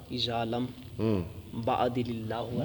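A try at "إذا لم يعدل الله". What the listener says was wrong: با کیا ہے، با تو ہے ہی نہیں. اذا لم یعدل اللہ ورسول، جب نہیں عدل کرے گا اللہ رسول.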